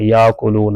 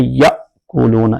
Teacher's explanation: یہ حمزہ جب ساکن ہوگا اس کو جھٹکا دے کے پڑھنا ہے ، حمزہ ساکنہ کو ہمیشہ جھٹکا دے کے پڑھتے ہیں، یأکلون